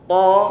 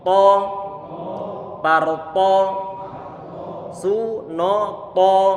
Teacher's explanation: pertengahan lidah dia nempel ke atas, terangkat ke atas. Kemudian dia juga punya sifat isti'la, pangkal lidah terangkat ke atas sehingga tebal.